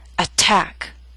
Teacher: attack is a word with two syllables stress is on the second attack so T although in the middle of the word is